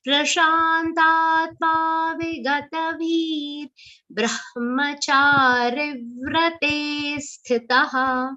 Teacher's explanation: So this bhi has to be long and subtle r, half r sound. The visarga will be pronounced like half r.